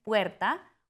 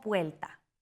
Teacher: Neutralización de R y L. En el Caribe muchas personas dicen puerta como puelta.